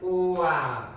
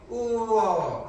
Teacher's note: 와하고 워를 봤을 때, 자, 이 친구도 소리를 두 개씩 나누면 와는 우와 하고 우에서 아로, 워는 우어 하고 우에서 어로 소리가 바뀌죠. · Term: 반모음 오우